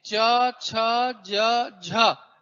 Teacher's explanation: इन्हें च वर्ग का व्यंजन कहा गया और तालव्य कहा गया। तालव्य का मतलब इन व्यंजनों को बोलते समय जीभ तालु को स्पर्श करती है